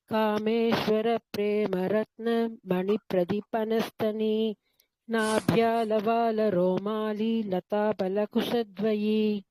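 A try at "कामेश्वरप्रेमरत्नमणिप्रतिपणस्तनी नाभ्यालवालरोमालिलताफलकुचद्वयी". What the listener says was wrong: Right, வெரி good.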